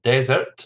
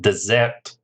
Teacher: Desert, the stress is on the first syllable, and dessert, the stress is on the second syllable.